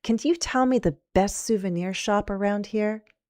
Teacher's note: as a can you question, we'll use rising intonation because it's yes, no.